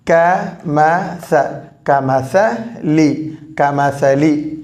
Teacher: எனவே அ ஆ என்ற சப்தத்தில் வரும். இந்த லி மட்டும் ஐ அதாவது கசரா எனவே இ என்ற சப்தத்தில் முடியும்.